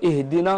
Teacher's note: النون تقرأ مرققة وليس مفخمة